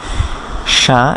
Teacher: শিন মুখ ভর্তি করে বাতাস নিয়ে হবে, জিহ্বার মাঝখান থেকে, কোথাও লাগতে হবে না, ফাঁকার অংশ থেকে উচ্চারিত হবে।